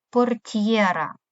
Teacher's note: буква Т передає м'який т і далі буква є позначає два звуки й е